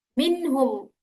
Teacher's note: nunnya harus dibaca jelas dan tidak boleh didengungkan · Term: idhar halqi